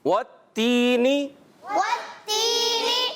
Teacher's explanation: واو کی ادائیگی ہونٹوں کی گولائی سے